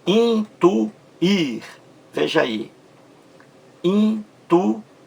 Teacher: A mais forte aí é a última sílaba, não é isso? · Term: Oxítona